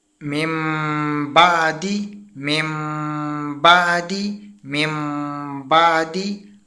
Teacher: ہم نے کھینچ کر تو پڑھا، ساتھ غنہ بھی کیا لیکن نرمی والا غنہ کیا، ہم نے زیادہ دبا کر غنہ نہیں کیا جس طرح نون مشدد اور میم مشدد پر ہم غنہ کرتے ہیں۔